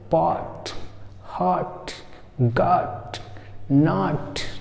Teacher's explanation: ना आ बोलेंगे ना ओ बोलेंगे, जैसे चंद्रबिंदी वाला आ होता है उस तरह से